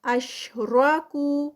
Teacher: را جو ہے یہاں پر ہیوی ہوگا درمیان میں کیونکہ را زبر کے ساتھ آ رہا ہے